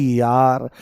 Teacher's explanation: य बोलते ही ई की ध्वनि आती है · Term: अर्धस्वर